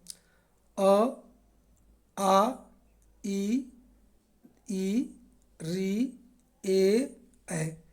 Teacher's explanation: इसमें जो बोलने के बाद जो मुंह का अगला भाग ओठ है वो गोलाकार नहीं बना, वो कहेगा अवृत्तमुखी। · अब हम जिस स्वर को बोलेंगे, उच्चारण करेंगे, अगर मान लीजिए कि होठ वृत्त के रूप नहीं लेगा, उसको क्या बोलेंगे, अवृत्तमुखी। जब स्वर का उच्चारण किया जाता है और मुख होठ वृत्त का आकार प्रदान नहीं करता है, उसे हम लोग क्या बोलते हैं, अवृत्तमुखी बोलते हैं।